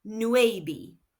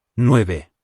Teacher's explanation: Note that V in Spanish is pronounced B.